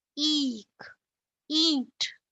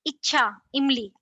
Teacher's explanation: ये ह्रस्व स्वर है और ये दीर्घ स्वर है। दीर्घ मतलब लंबा खींच के बोलना है और ये क्विक है एकदम से